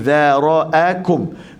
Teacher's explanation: Za lembut, ra tebal, lepas tu a lembut, kaf tebal.